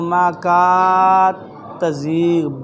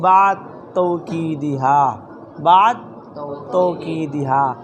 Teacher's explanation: دال کا تا میں ادغام ہو جائے گا